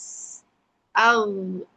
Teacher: posisi huruf gin itu ada di pangkal tenggorokan atas. Ag sama kayak huruf ko.